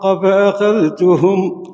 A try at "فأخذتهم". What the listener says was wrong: لا ورش يدغم فأخذتهم. ذال مع التاء إدغام، تاء راهي مشددة. ورش إيه إدغام.